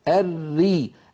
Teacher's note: بينما الصورة اليسرى التي في أيسر اللوحة تبين لنا الراء المرققة: الري نجد بأن اللسان لم يتقعر، وبأن لسان المزمار أو بالأحرى الحلق لم يتضيق كما حدث في الراء المفخمة